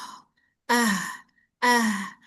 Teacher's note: Dia kan suara itu aliran itu ada aliran nafas, ada aliran suara. Si H ini selain aliran nafas, dia juga aliran suara yang terdengar.